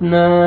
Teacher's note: الف سے پہلے زبر ہے، الف مد ہے، نون کو آپ نے کھینچنا ہے